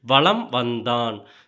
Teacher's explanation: மகர மெய்யானது தனக்குரிய அரை மாத்திரை அளவிலிருந்து குறைந்து கால் மாத்திரை அளவில் ஒலிக்கிறது இவ்வாறு குறைந்து ஒலிக்கும் மகரம் மகர குறுக்கம் எனப்படும் சோ என்ன என்ன சொல்றாங்கன்னு